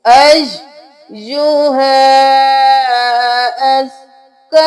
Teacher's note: या मुशद्दद हर्फ है, 2 बार पढ़ेंगे